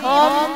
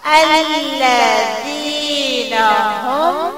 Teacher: ہا کو موٹا میم کو پتلا